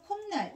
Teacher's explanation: 디귿이 니은과 인접해 있으면 니은으로 이렇게 발음되겠죠